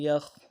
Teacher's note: یا خا زبر یخ، خا میں بھی آواز جاری رہے گی، موٹا بھی کریں گے خا کو